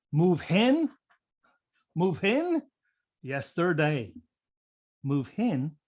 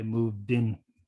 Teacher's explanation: but what my students do is something called h apenthesis so they'll add an h in at the beginning of words beginning with a vowel